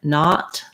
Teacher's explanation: my jaw is more open. It's an open back vowel. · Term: the ah sound